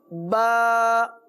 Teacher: ایک حصہ جو باہر کی طرف رہتا ہے اس کو کہتے ہیں خشک حصہ، اور ایک حصہ اس سے تھوڑا سا منہ کی طرف اندر کی طرف ہے، یہ ہے تر حصہ. تو با دونوں ہونٹوں کے تر حصے سے ادا ہوتا ہے.